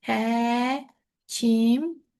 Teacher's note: Peşə bildirəndə əsasən vurğu sona düşür. Ona görə burada ikinci heca deməli bura olur, həkimə düşür.